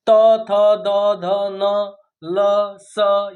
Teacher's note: अर्थात जब इनका उच्चारण हम करते हैं इन वर्णों का तो हमारी जीवा जो है दांत ऊपर वाले दांतों के अंदर वाले हिस्से में टच करती है · तो हमारी जिह्वा जो है दांत, ऊपर वाले दांतों के अंदर वाले हिस्से में टच करती है, इसलिए इनको दंत्य वर्ण कहा जाता है। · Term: दंत वर्ण